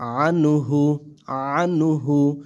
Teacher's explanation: নুন সাকিনের পরে হা ইজহারের হরফ স্পষ্ট করে পড়তে হবে গুন্না করা যাবে না